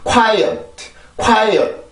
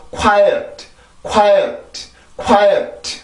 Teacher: quiet, quiet 이렇게 뚝 떨어지면 안 되고 quiet, quiet, quiet 소리가 한 번 더 올라와야 돼요. 그냥 뚝 떨어지면 이 소리 자체가 굉장히 달라지게 됩니다.